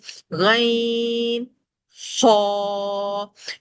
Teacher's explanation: یہ دونوں حروف مستعلیہ ہیں، موٹے پڑھے جانے والے حروف ہیں، ان میں ہمیں خیال رکھنا ہے کہ آواز بھاری رہے، اور بھاری پن کے ساتھ ان دونوں میں حلق میں خراش آتی ہے، گراہٹ کی آواز آتی ہے۔